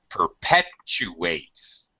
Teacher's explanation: There's a W between the U and the A here in the middle. We have a glide when we use a W or a Y sound to join two vowel sounds.